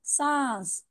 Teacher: नाक में आवाज चली गई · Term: नून गुन्ना